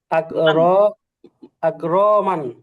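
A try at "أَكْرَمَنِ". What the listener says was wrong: হ্যাঁ, রটা টান হবে না, আকরমান।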